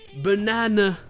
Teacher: le dernier a n'est pas accentué